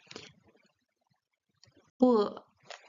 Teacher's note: it's stronger than the English B, so the lips have to close stronger to pronounce it.